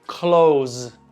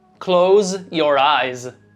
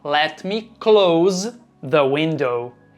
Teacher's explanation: Já o verbo fechar não é close, e sim close, com som de Z no final.